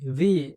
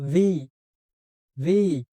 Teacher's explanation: এই উচ্চারণটা একটু, ভি এর উচ্চারণটা একটু ক্রিটিক্যাল। এটা বিও নয় বাংলার, আবার ভিও নয়, ব ভ দুইটার মিশ্রণ। ভি। মুখ দিয়ে একটু বাতাস বের হবে, ভি।